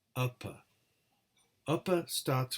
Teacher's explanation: Upper starts with a vowel, then the mouth slowly closes and the lips close tight, and then the lips open and we produce another vowel. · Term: Stops